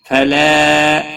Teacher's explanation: لا الف مدہ ہے، ایک الف کے برابر کھینچ کر پڑھیں گے